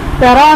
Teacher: तरा में रॉ पर ज़बर है, रॉ पुर पढ़ा जाएगा।